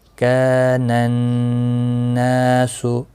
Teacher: نون مشدد پر غنہ بھی ہوگا، اور یہاں ال آیا ہے نون مشدد سے پہلے، تو یہ نہیں پڑھا گیا کیونکہ نون حروف شمسیہ میں سے ہے۔